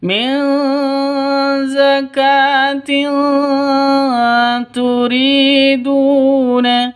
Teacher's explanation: tanwin bertemu dengan ta samar didengungkan siap-siap ke huruf tanya ya karena ikhfa ikhfa Hakiki samar didengungkan